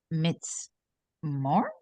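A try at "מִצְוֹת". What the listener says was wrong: All right, so this vav here is a consonant. Mitzvot.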